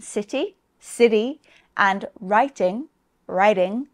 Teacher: the letter T can also be pronounced as a small D, sometimes called a flap in some accents, especially in American English. And this sound can come between vowel sounds like in city, city, and writing, writing.